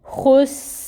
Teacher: حروف مستعلیہ میں سے ہے، اس کو پر پڑھیں گے، موٹا کر کے ادا کریں۔ اور پھر سین ساکن ہے، اس کی صفت کو اچھی طرح واضح کریں، خس، اور رو کو اب ہم ساکن کریں گے، کیونکہ آگے وقف آ رہا ہے، آیا مکمل ہو رہی ہے، وقف کریں گے رو پہ اور رو کو ساکن کریں گے، اور یہ جب ساکن ہوگا تو یہ پر پڑھا جائے گا۔